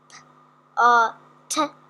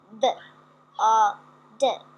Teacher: the top line is unvoiced and the second line is the voiced version of the one above. It's exactly the same movement, but when you pronounce the top one P uh T, there's no vibration.